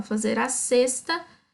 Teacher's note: fazer a sexta tá ela é com som aberto tá não é um som fechado